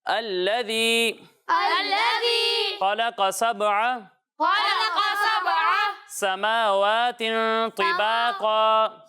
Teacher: قاف حروف مستعلیہ میں سے، ٹھیک ہے؟ تو اسے پر پڑھنا ہے، موٹا کر کے پڑھنا ہے۔